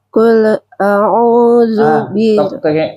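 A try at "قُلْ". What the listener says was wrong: Jangan mantul, Bu. Kul, jangan. Kul, Ibu lepas. Kul, lepas.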